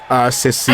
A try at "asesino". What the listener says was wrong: You're like completely missing the other S. You're saying Asesino. You're forgetting the S. Asesino.